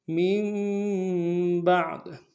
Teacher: فی الثلث من بعد، میم کو آگے نون کے اوپر جو چھوٹا سا میم اس کے ساتھ ملائیں گے، میم غنہ کریں گے، با کو عین کے ساتھ ملانا، عین کو گہرے سے ادا کریں گے